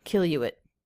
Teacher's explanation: Linking the oo vowel into the schwa with a Y sound.